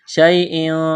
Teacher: یا لین ہے، اس کو کھینچنا نہیں ہے